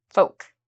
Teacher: so with the word folk there's no l pronunciation